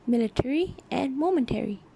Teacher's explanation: In some cases in RP, the sound schwa is even elided